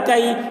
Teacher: وَأُوتِيَ كِتَابَهُ وَأُوتِيَ كِتَابَهُ كَيْفَ فَعَلَ کاف یا زبر کئی، یا ساکن سے پہلے زبر ہے، یا لین ہوا اس لیے یا لین کو نرم آواز کے ساتھ جلد پڑھیں، معروف پڑھیں، مجہول آواز سے بچیں۔